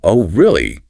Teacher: oh really with upward inflection shows surprise yeah it's like he's saying I didn't expect you to say